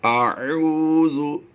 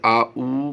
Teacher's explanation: आइन और हमजा की आवाज़ में फ़र्क रखते हुए हमने इसे अदा करना है। अगर आ ऊ करेंगे आ ऊ तो ये हमजा की आवाज़ बन जाएगी।